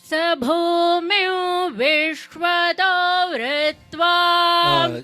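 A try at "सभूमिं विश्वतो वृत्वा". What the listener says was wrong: Now you have to slow down. When you're chanting fast, and then don't chant with your nasal. Chant with your full voice. When you're saying Sabhomyo Vishwato, I'm listening to her. You see, when I'm listening to it, there is more nasal sound than the original sound.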